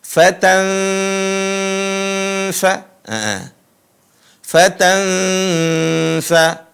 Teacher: suara nunnya disembunyikan ke makhraj, ke tempat keluar huruf fa. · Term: nun sukun